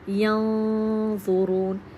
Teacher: نون کی آواز ہمارے ناک میں سے آ رہی ہوتی ہے، نہ تو بالکل کلیئر ہوتی ہے اور نہ ہی بالکل چھپی ہوتی ہے، اس کی درمیانی کیفیت میں، تو یعنی کہ تھوڑی سی چھپی ہوئی۔ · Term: اخفاء